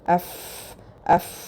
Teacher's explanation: കീഴ്ചുണ്ടിന്റെ ഉൾഭാഗവും മേൽവരിയിലെ മുൻപല്ലുകളുടെ അറ്റവും മേൽവരിയിലെ മുൻപല്ല് okay upper ഇൻസിസസിന്റെ അറ്റം കീഴ്ചുണ്ടിന്റെ ഉൾഭാഗത്ത് വെച്ചിട്ട് എഫ്എഫ് okay